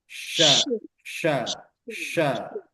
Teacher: tengah lidah menyentuh bagian atas langit-langit kemudian mengucapkan huruf syin yaitu bagian tengah lidah juga dia seolah-olah mendekat ke langit-langit bagian atas sambil menghembuskan udara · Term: huruf shin